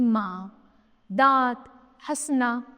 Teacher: ऐसी स्वर जिनका उच्चारण नाक और मुख की सहायता से होता है अनुनासिक कहलाते हैं